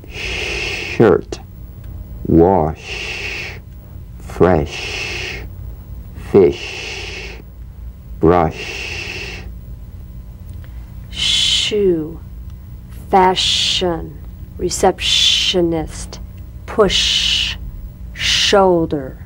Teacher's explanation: the distant wind-like sound of the SH is made by bringing the side teeth gently together and shushing quietly